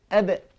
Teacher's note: Caranya meluah rabb ba ni dengan menutup dua bibir mulut. Apakala kedua bibir mulut ni ditutup tapi dengan sentuhan saja tidak begitu berat.